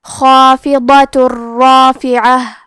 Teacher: ہم تنوین کو را میں ملا کے بغیر غنہ سے لیکن تشدید کے ساتھ یہ حکم کو ادا کریں گے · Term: ادغام